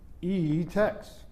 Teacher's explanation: The second vowel has a strictly rising tone almost as if you're asking a question · The first vowel is spoken with a dipping tone